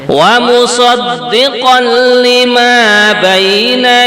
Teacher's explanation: tanwin bertemu dengan lam adalah idgham bila ghunah